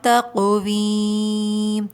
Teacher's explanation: تقویم کے اندر بھی قوف پہ قلقلہ ہو رہا ہے، ٹھیک ہے۔ تقویم، آخر میں میم ساکن ہے تو آواز کو پورا نکالیں گے۔